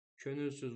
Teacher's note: Könülsüz vurğu sondadır. Və incə sait ü, qapalı sait ü, dodaqlanan sait də üdür. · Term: incə, qapalı, dodaqlanan